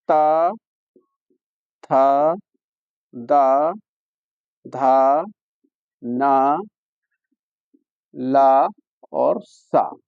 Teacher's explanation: जब तक जीभ दांतों पर नहीं जाएगी तब तक यह वर्ण उच्चारित नहीं होंगे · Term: दंत स्थानीय